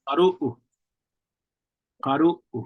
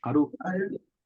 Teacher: In some dialects, they might just kind of completely drop the glottal and that second set of double O's.